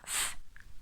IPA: θ